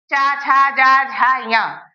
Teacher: तालु से। जीभ हमारे जो ऊपर तालु है उसको स्पर्श करके इन अक्षरों को बोलती है